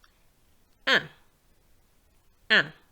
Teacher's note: And you can feel it through your nose.